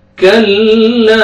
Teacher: کاف کو باریک پڑھیں گے الف سے پہلے فتحہ لام کو آپ نے کھینچنا ہے